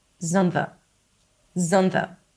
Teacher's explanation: The glass is turns into is on turns into and again we have another the so it's not is on the it's zunva zva. We reduce the vowel and we connect the words together.